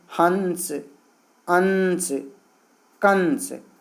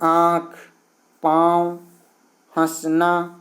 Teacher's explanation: अनुस्वार में जब अनुस्वार का उच्चारण करते हैं तो वायु नाक से निकलती है, जबकि अनुनासिक के उच्चारण करते समय वायु नाक और मुंह से दोनों से निकलती है, और मुंह से ज़्यादा तथा नाक से कम निकलती है।